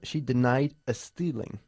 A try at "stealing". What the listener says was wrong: Es más largo el sonido de la vocal y tampoco empieza por vocal, ¿ok?